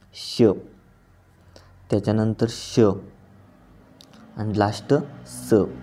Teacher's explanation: वर्ण उच्चारताना जोराने उसासा बाहेर टाकला जातो आणि त्यामुळे काय होतं, घर्षण निर्माण होते आणि उष्णता निर्माण होते, त्यांना आपण उष्म म्हणतो. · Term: घर्षक